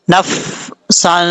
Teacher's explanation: اب یہاں پر سین کے اوپر دو زبر ہیں، دو زبر کی تنوین کے بعد فا آ رہا ہے حروف اخفا میں سے، تو یہاں پہ غنہ کریں گے ایک الف کی مقدار، فا پہ قلقلہ نہیں کرنا، اس چیز سے بچنا۔